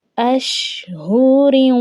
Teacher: را کی ادائیگی کرتے وقت آواز جو ہے وہ ہمارے ناک کے بانسے سے ادا ہوتے ہوئے آئے گی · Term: گنہ